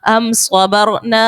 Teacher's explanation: حمزہ میم زبر ام، صاد زبر صا ام صا، با را زبر بر ام صبر، نون الف زبر نا ام صبرنا. میم ساکن کے بعد با اور میم کے علاوہ صاد ہے، اظہار شفوی کا قاعدہ ہوگا اور غنہ نہیں کریں گے